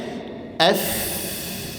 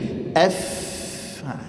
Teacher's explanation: Kemudian huruf fa, makhraj huruf fa adalah tarfu athana al-ulya ila batni syafa sufla. Ujung gigi seri atas ditempelkan ke bibir bahagian bawah.